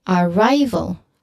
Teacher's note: the syllable stress is on the second syllable